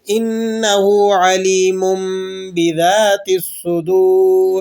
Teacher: ہم نے چینج کر کے تنوین کی آواز کو میم کی آواز کے ساتھ پڑھنا ہوتا ہے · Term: اقلاب